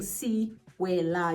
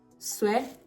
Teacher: The first E is mute. So if I were to like break it down, I take it down from like 3 syllables to 2, right? So instead of saying Sewela, you're gonna say Sewela.